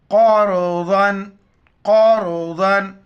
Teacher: را سے پہلے والے حرف پر زبر ہے، را کو موٹا پڑھیں گے